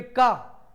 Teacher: का बोलते हुए आप ये महसूस करेंगे कि आपकी जो सांस है वह कंठ से बाहर निकल के आ रही है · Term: कंठ व्यंजन